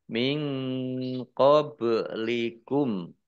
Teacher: Nun sukun bertemu dengan huruf qaf, bacaan ikhfa. Dibaca samar-samar.